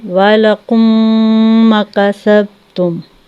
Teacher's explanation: تھوڑا سا ناک میں جو ہے آواز کو گھما کے ہم پڑھیں گے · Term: غنہ